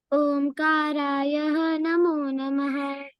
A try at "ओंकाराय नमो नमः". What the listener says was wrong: Okay, there is no two dots after ya. Omkaraya, that ends with ya, not Omkaraya. Okay, Omkaraya namo namaha. Namo namaha.